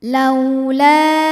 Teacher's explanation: Mad tabi'inya adalah alif didahului harokat fathah pada kata laula, hamzahnya yang u pada kata unzila, maka lamnya dipanjangkan, boleh 4 boleh 5 harokat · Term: mad jaiz munfasil